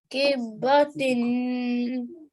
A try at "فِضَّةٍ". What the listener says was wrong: This is a fa. Fiddatin.